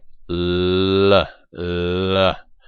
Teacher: This approximant sound, what's actually happening is that the tip of your tongue touches the alveolar ridge, but then your breath moves around the tongue, around the blade of the tongue, around the sides of the tongue, and that makes the l sound. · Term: alveolar approximant